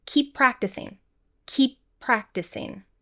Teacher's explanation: We have more consonant to consonant linking here, so we only pronounce the P once